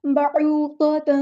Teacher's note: تا پر 2 زبر ہے تو اس کی یہاں پر نون کی تنوین کی آواز کو ہم نے نون تنوین کی آواز کو چھپا دینا ہے، اخفا ہوگا